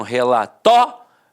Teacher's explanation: Algumas pessoas dão uma extensão na fala e acabam falando relatório. Então, separa o O do I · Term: proparoxítona eventual